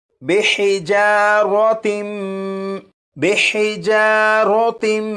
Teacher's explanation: یہ جو تا دو زیر تین ہے اسے میم کے ساتھ ملائیں گے اور غنہ کر کے پڑھیں گے